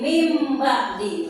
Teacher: mengubah suara N menjadi M. Tadinya min ba'di dibaca jadi mim ba'di. Maka ruku bacaannya yaitu iklan. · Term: iqlab